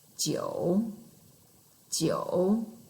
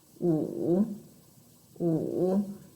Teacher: You start with very, very low, and then your tone change, and then your tone goes up again. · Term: third tone